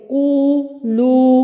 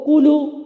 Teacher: इसको कूलू ऐसे नहीं पढ़ना, ये गलत हो जाएगा। आधा अलिफ नहीं पढ़ना, 1 काउंट नहीं पढ़ना, बल्कि इनकी मिकदार याद रखनी है। 2 हरकत यानी 1 अलिफ, तो कू लू इतना पढ़ना है। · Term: वाव मदा